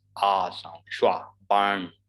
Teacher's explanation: R is before a consonant, so we don't pronounce it. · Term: schwa sound